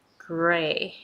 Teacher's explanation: So it's gray. So when you pronounce G, you pronounce R at the same time